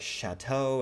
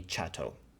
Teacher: Malagasy speakers trying to speak French are going to realize the fricatives in French as affricates